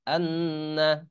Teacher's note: যখন মিমের উপর তাজদিদ হয় আর নুনের উপর তাজদিদ হয় তখন এরকম গুন্না করে পড়তে হয়। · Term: ওয়াজিব গুন্না